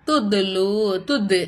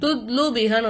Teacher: இந்த 5 எழுத்துக்களும் சுக்குன் பெற்ற நிலையில் வந்துச்சுனாக்கா அப்ப நம்ம என்ன செய்யணும்? இந்த எழுத்துக்களை அசைச்சு ஓதணும். கல்கலா செஞ்சு ஓதணும்.